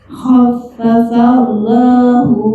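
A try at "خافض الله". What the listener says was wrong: Allah tebal. Khaffafallahu.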